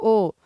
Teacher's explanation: ये कंठ और ओठ दोनों से बोला जाता है। अगला, प्रयत्न के आधार पे ल का किस प्रकार की ध्वनि है? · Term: कंठोठस्य ध्वनि